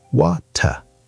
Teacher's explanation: in Australian English, Australians also have a clear T sound, more like British English